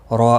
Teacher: را الف مدہ ہے، ایک الف کے برابر کھینچ کر پڑھیں گے، را زبر کی وجہ سے پر پڑھا جائے گا